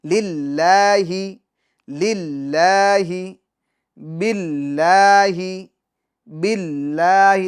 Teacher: لفظ اللہ کے لام سے پہلے جو با ہے اس کے نیچے زیر ہے تو اس کو باریک پڑھیں گے